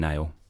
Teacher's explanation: they delete the S off the S blend